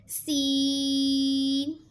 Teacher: سین زبان کی نوک اور دونوں دانتوں کے اندرونی کنارے سے ادا ہوگا۔